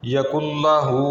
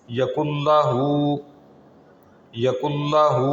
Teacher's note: اب کاف کو ہم نے براہ راست آگے لام سے ملا دیا، ادغام کر دیا، نون کی آواز درمیان میں سے ختم ہو گئی اور ناک میں آواز کو ہم نے روکا نہیں ہے۔